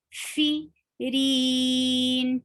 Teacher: Hums is flow of breath. The fa should be heard with flow of breath.